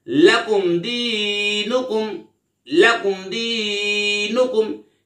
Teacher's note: यहां पे मीम साकिन के बाद दाल आ रहा है तो यहां पर इजहारे शफवी होगा, यानी गुन्ना नहीं करेंगे। लाम ज़बला, काफ मीम पेशकुम, लकुम।